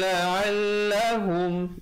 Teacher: izhar syafawi, bunyi saja hum, terus masuk kepada yatadzakkarun